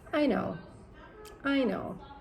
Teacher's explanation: that's typically how Americans will say something that's not a question, right? The intonation will drop. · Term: falling intonations